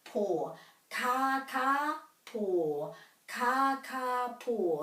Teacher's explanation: the emphasis would be on each of those syllables evenly